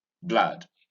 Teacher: Rounding your lips for this word? No, don't round your lips. It's an unrounded sound.